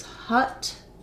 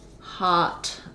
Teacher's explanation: hut is the word that has schwa hot is the word with vowel ah